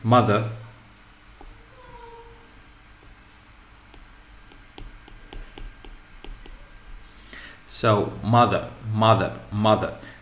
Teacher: So in this case, as you hear, we focus on the first syllable.